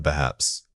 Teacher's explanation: When you say perhaps, maintain a conversational open tone. Avoid any sharp falls. A steady, moderate pitch signals that your idea is speculative and not fully formed.